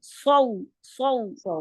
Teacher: सवाद की सीटी जो है वो मोटी है · سین کی سیٹی باریک ہوگی سو, یہ والی ساؤنڈ سو سو. صاد کی سیٹی جو ہے وہ موٹی ہے سو سو. ٹھیک ہے, اس میں زبان کی جڑ بھی اٹھے گی اور درمیان میں زبان کے جو درمیانی پارٹ ہے اس کا زبان کا وہ جیسے گھڑا سا بن جائے گا اور آواز جو ہے وہ موٹی نکلے گی.